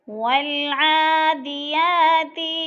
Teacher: والعادیات والعا جو ہے عین کے اوپر کھڑی زبر ہے اور یا کے اوپر بھی کھڑی زبر ہے، دونوں الف مدہ کا قائم مقام ہے، ان دونوں کو کھینچ کر پڑھنا ہے، یعنی ایک الف دو حرکات کے برابر